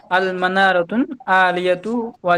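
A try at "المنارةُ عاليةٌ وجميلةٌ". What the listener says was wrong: মানারতু এক পেশ হবে, আলিফ লাম হলে এক পেশ হয়।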